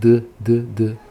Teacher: Não tem como fazer o som de D da letra D sem usar as cordas vocais.